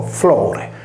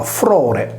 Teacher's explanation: la /r/ sostituisce la /l/ nei nessi consonantici